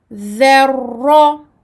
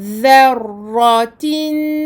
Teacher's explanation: Et quand nous allons le doubler, on fera également attention à ne pas provoquer trop de takrir, à ne pas le faire trop rouler, comme on dit entre guillemets. Donc la langue doit se poser 2 fois sur le palais très légèrement afin de permettre de prononcer 2 ra. Le premier sakin et le deuxième maftour.